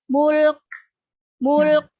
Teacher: lainnya sukun haknya dicukupkan juga jadi Mulk mulanya diselesaikan dulu dialirkan berikan sifat bainiyah pada huruf lam sukun